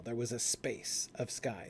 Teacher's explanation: So we combine the S with the P sound.